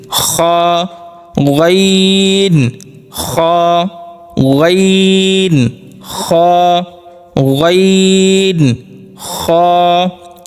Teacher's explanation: শেষ অংশ যেই জায়গাটা ওখানে একটু وائبব্রেশনের মত হয় একটু কাঁপে আমরা হাত দিলে দেখতে পারবো উচ্চারণ সময় ওখানে একটু কাঁপছে হলকের শেষ